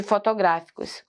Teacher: O gra é mais forte, ó. Ela é proparoxítona aqui, ó.